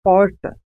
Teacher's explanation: há um movimento de retroflexão da língua em direção ao fundo da boca. É falado aqui em São José do Rio Preto, interior de São Paulo. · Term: R retroflexo